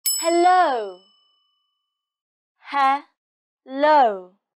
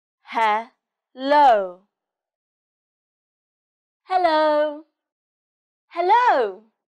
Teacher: the stress is on low so you make the sound louder and longer